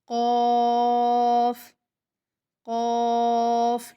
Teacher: منہ بھر کے ادا کریں گے لیکن ہونٹ گول نہیں کریں گے، ہونٹ گول نہیں ہوں گے۔